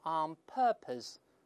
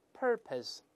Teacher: 英式发音读成▁on▁purpose，▁它没有卷舌音